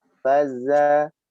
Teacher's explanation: anfusahum maradun fa tekan ditahan yang lama faza za lagi-lagi zai ya jangan sampai tertukar sama zal faza zal ujung lidah dikeluarkan sedangkan zai nempel pada gigi seri bawahnya faza za disertai sedikit desis sifat khusus pada huruf zai yaitu sofir